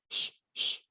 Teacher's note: شین کی آواز ایک اسپرے کی طرح آتی ہے، جس کو ہم تفشی کہتے ہیں، پھیل کر آتی ہے اسپرے کی طرح